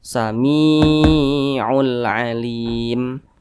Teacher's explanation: Mad Thobi'i panjangnya dua harakat atau kira-kira dua ketukan · Apabila huruf yang posisinya tepat berada di belakang huruf ya sukun, apabila dia berbaris ke bawah maka dibaca panjang. Maka huruf mim dibaca panjang karena dia berbaris ke bawah dan posisinya tepat berada di belakang huruf ya sukun. Mad tabi'i panjangnya 2 harakat atau kira-kira 2 ketukan.